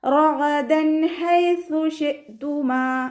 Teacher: നമ്മുടെ നാവിൻ്റെ അറ്റവും മേലെ മുൻപല്ലിൻ്റെ അറ്റവും ചേർന്നിട്ടാണ് സ പുറപ്പെടുന്നത്.